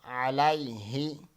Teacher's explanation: الیہ، یا ساکن سے پہلے زبر ہے تو یا لین ہوگا۔ علیہ، یا ساکن سے پہلے زبر ہے تو یا لین ہوگا، اس کو ہم نہیں کھینچیں گے